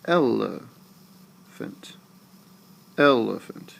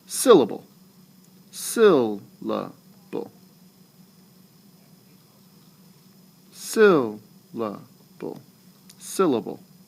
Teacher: Your voice is going down as you say that word. It starts high and it goes down the last 2 syllables. So you stress, unstress, unstress. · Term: dactylic foot